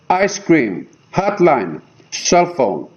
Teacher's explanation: Now both syllables are stressed. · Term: spondee